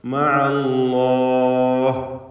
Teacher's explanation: അന്ത്യത്തിൽ ഹാ വ്യക്തമാക്കണം. വഖഫ് ചെയ്യുമ്പോൾ മഅല്ലാഹ് ഹാ വ്യക്തമാക്കി സുക്കൂൻ നൽകി ഉച്ചരിക്കണം. അവിടെ വഖഫിന് വേണ്ടി ദീർഘം ആകാവുന്നതാണ്.